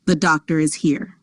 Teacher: The R is inserted between doctor and is to link the vowels smoothly. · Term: linking R